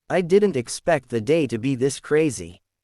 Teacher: Feel the stress on, didn't, and, crazy.